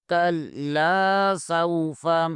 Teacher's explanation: کلا سین واو زبر سو فا زبر فا سوف کلا سوف کاف کو بریک پڑھیں گے اور لام کو بھی بریک پڑھیں گے